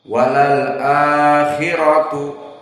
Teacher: ra-nya mufakhamah dan madnya 2 harokat